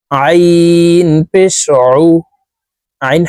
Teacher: হরফকে হালকের মধ্যখান থেকে চাপ দিয়ে উচ্চারণ করতে হবে কারণ আইনের মাখরাজ হালকের মধ্যখান থেকে হবে আইন পেশ উইন পেশ